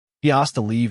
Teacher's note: The 's' sound often merges with the 't', creating a rapid flow. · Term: hasta